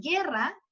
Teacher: ahí no se considera la u porque la u no está sonando en guerra la u está atenuando el sonido